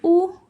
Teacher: आपके मुंह में लगेगा कि हां कुछ राउंड सा गोल सा बना है। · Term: वृत्तमुखी